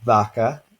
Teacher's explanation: a bilabial fricative which we don't really have in english but so we have a stop becoming a fricative you see